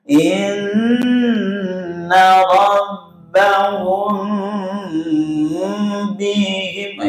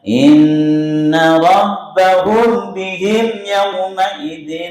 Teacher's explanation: Yang mim sukun ketemu dengan ba karena ikhfa syafawi. Jadi harus didengungkan dengan sempurna.